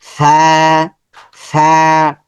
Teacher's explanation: ফায়ের মাখরাজ হচ্ছে উপরের দাঁত, নিচে ঠোঁট, নিচে ঠোঁটের মধ্যে লাগবে। ফা, নরম সাউন্ড হবে, খুব শক্ত হবে না।